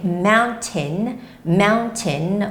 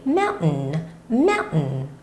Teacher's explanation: you can say mountain, mountain with the hard T, and you can also say mountain, mountain with the soft T